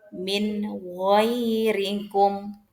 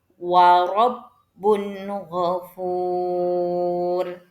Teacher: Dibacanya jelas, baik nun sukun ataupun huruf setelahnya, ya, tanpa dengung ataupun tanpa samar juga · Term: idhar